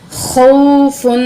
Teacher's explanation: یہ حروف لین میں سے ہے، جلدی اور نرمی سے پڑھتے ہیں اس کو۔